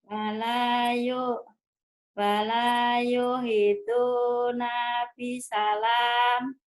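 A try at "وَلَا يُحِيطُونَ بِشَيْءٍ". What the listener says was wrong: Kok bisa alam? Astagfirullahaladzim. Kenapa jadi bisa alam? Shinnya gede ya. Wala yuhituna bisyai'in.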